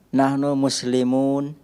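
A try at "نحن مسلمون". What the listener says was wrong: Hidupkan semua harakat huruf terakhirnya.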